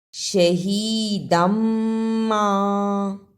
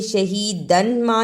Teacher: ما، اسے شہیدن ما نہیں پڑھنا، دال دو زبر میم دم، میم پر شد ہے اس لیے دال کو میم سے ملانا ہے